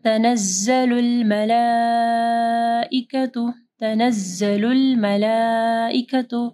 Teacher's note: مد ہے، اس کے بعد حمزہ ہے، 4 سے 5 حرکات کے برابر اس کو لمبا کرنا ہے